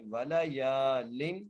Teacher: یا کو ایک الف کی مقدار کھینچ کے پڑھنا ہے